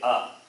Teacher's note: its place of pronunciation is throat only